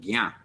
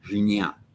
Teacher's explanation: the J followed by the N with a tilde is pronounced more of a harder, almost hard G sound, gya, as opposed to jinya.